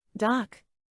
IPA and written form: dɑːk (Dock)